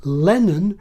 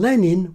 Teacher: My kind of accent has a contrast between Lennon with a schwa and Lenin with kit. That's a minimal pair for me, so the unstressed vowels are clearly different phonemes.